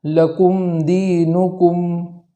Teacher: آگے والے کلمے کے اندر بھی جو میم پر جزم ہے اس میم کو متحرک ہونے سے بچانا ہے